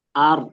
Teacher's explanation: Jadi getarannya enggak terlalu banyak, enggak juga hilang. Kita kasih di sini 2 sampai 3 getaran.